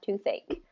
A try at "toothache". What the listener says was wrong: It's a little bit more kind of halted and not as fluid,